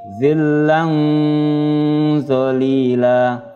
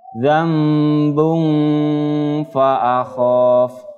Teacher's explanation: Ya, fathah tanwin bertemu dengan zo. Ya, mendengung 2 harokat ditahan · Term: bacaan ikhfa hakiki